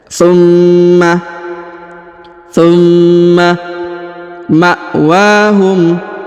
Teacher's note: tsumma huruf mim berharokat tasdid, maka ditahan dan ditekan ya.